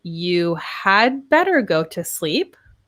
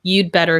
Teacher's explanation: normally we shorten had to d in informal situations